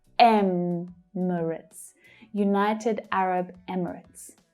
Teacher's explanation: The stress in Emirates is on the first syllable.